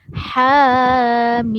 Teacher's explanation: Lepas tu huruf mim. Mim pula ada mad lazim di sini. Jadi dibaca panjang 6 harakat.